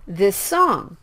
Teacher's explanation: the same s sounds so you can pronounce one of the S sounds for a little bit longer